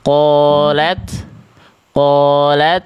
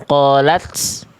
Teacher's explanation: Tapi ta itu ketika sukun dia yang terasa itu sifat namanya hams.